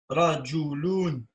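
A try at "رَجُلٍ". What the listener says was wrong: Rajoulin, il y a in à la fin. Non, c'est un tanwin en N.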